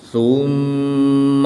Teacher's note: میم مشدد میں ہمیشہ غنہ ہوتا ہے تو یہاں پر غنہ کر کے پڑھیں گے